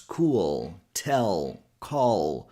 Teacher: And we connect this sound with the dark L sound. that L sound we hear in words such as cool, tell, call, which is that sound we put more pressure in the back of the tongue. A good way to understand this sound is to put the tip of your tongue behind your upper teeth and try to make a sound with the back part of your tongue like.